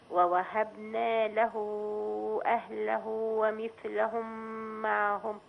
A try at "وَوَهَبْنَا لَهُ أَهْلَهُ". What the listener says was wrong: الباء ما كانتش باينه. ووهب،